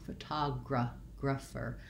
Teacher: And then I have my word that looks like graph, and again doesn't sound like graph in this word. Rather than an a clear vowel, again we go back to our schwa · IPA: /fəˈtagrəfər/